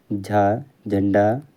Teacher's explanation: तालव्य महाप्राण घोष वर्ण का उदाहरण है।